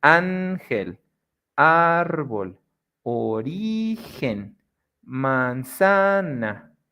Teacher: Graves o llanas are the ones that have the sílaba tónica right immediately after the next one, which is the second to last. The stress syllable is going to be the second to last